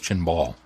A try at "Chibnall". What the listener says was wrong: No, there's no N. The N is after the B. Chibnall.